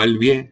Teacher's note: Una N intervocálica que se reduce o desaparece, como el vie, en lugar de viene, el vie por allí.